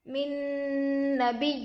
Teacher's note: نون پر جزم ہے، نون ساکن ہوگا، نون ساکن کے بعد حروف یرملون میں سے نون دوسرے کلمے میں آ کر ہے، اس لیے گنہ کے ساتھ ملا کر پڑھیں گے۔ اس کو ادغام مع الغنہ اور ادغام ناقص بھی کہتے ہیں۔